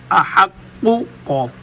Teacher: تو قوف کو ادا کرنے کے لیے اپنے زبان کو تالو کے نرم حصے پر لگایا جائے گا۔ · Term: موٹا قوف